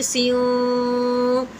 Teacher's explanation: اخفا کا غنہ کرنا ہے، جو ناک میں چھپے گا لیکن ناک میں بالکل ظاہر نہیں ہوگا